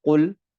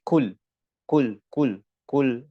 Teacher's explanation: makhrajnya huruf qaf ini biasa pindah ke kaf